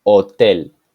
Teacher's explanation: the letter H is silent in Spanish so when we say El Hotel we don't pronounce the letter H we just start with the letter O Hotel when H and